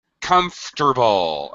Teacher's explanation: English speakers drop the middle syllable we do this especially with syllables that are a vowel and